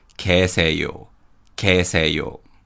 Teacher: And in terms of pronunciation, in 계세요, 개 uses the Y glide vowel 예, but the Y sound weakens and we pronounce it as 계세요, 계세요.